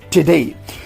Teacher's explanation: the vowel in the first syllable may disappear